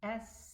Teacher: But also the sin has a flowing of air. It has a whispering sound.